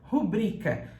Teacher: E uma pessoa quis teimar que existe a palavra rúbrica. Não existe essa palavra como proparoxítona. Ela é sempre paroxítona e você fala rubrica.